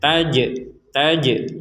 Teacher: jim sukun ini kita pentalkan atau dipantulkan ketika membacanya. Jadi kita membacanya taj.